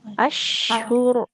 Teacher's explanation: Tengah lidah dia menempel ke langit-langit. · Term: shinnya